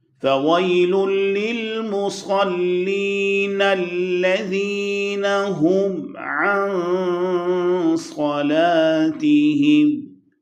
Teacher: نون پہ غنہ، اور اس غنہ میں کچھ تفخیم بھی، بیکاز صاد اس کے بعد آ رہا ہے جو کہ حروف مستعلیہ میں سے ہے۔